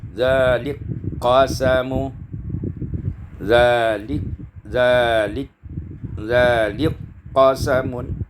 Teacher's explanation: Ayat yang kelima, zalika qasamun, idgham kaf fil qaf, diidghamkan kaf pada qaf